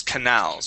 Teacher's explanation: it is canals with the accent at the end